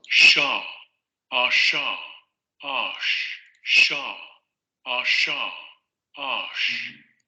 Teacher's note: la lengua va a subir hacia la zona de los postalveolos o la zona prepalatal, lo que les comentaba, entre el bordecito este duro que tenemos arriba en el paladar y ya el paladar en general, tenemos una transición y es ahí donde se coloca la lengua. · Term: Postalveolar fricativo sordo